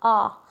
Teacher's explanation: ये हमारी कंठ से ध्वनि निकलती है और हमारा मुंह जो है वो खुल जाता है, इसमें हम अपने होठों का प्रयोग नहीं करते हैं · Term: पश्च वर्ण